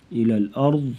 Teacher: ضاد کو اور را کو پر پڑھیں گے